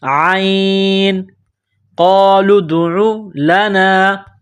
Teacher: عین کو گلے سے نکالیں گے زور لگا کر